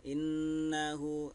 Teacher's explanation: Nun syiddah ini gunnah ditekan ya. Innahu ditekan atau didengungkan, innahu selama 2 harkat.